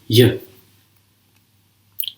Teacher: consonants that are produced even further back in the mouth at the hard palate. This would then be a palatal consonant, in English, y.